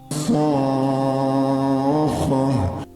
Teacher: the vowel is supposed to be stretched for 6 seconds